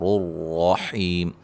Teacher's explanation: یہاں راؤں کو موٹا پڑھیں گے دونوں کو